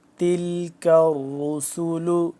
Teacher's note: اعوذ باللہ من الشیطان الرجیم، بسم اللہ الرحمن الرحیم۔ تلک الرسل، کاف باریک ہے، را موٹا ہے